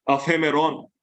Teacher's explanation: Because there's also a rough breathing mark here. So the pa sound becomes the fa sound of hemeron. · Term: aspirated form